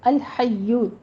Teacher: حی کی آواز جو ہے وسط حلق سے نکالتے ہوئے آگے یا کے اوپر آپ نے تشدید ادا کرنی ہے، لیکن اس کو شین یا جیم نہیں بنانا۔